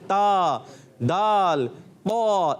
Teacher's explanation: زبان کی نوک یا سرا. زبان کا سرا اور اوپر کے دانتوں کی جڑ سے. زبان کا سرا جب اوپر والے دانت جس کو ثنایا علیہ بھی کہتے ہیں ان کی جڑوں میں جب لگتا ہے تو ادا ہوتا ہے تا، دال، قا. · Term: حروف نطعیہ